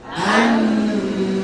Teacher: Dia ikhfa tapi akrab, paling dekat dengan suara nun. Ya, mirip dengan suara nun. · Nah, posisinya sudah di ta. Ujung lidah sudah di makhrajnya ta. Bukan makhrajnya nun, tapi makhrajnya ta ya, ta. Ta itu pangkal gigi atas.